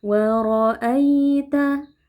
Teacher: Huruf ra kita baca tebal karena ra-nya berharakat fathah ya, kita angkat pangkal lidah.